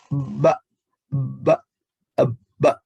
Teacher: Selanjutnya ba. Nah, huruf ba ini adalah antara dua bibir yang disertai dengan tekanan. Ba, ba, ba.